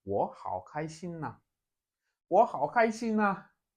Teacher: the very first third tone here will change to second tone. It will now be 我好开心啊，我好开心啊.